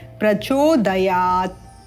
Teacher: हलंत युक्त वर्ण का जब उच्चारण हमें करना है पद के अंत में यदि वह आता है तो अ की अल्प ध्वनि के साथ उच्चारण करना है